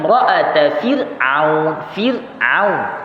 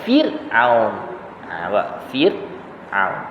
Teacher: Maksudnya kalau bukan tarqiq, maksudnya tafkhim lah, tebal lah. Tapi disebabkan ra itu mati sebelumnya baris di bawah, maka hukumnya adalah tarqiq, nipis. Baca dengan nipis Fir'aun, jangan baca dengan tebal.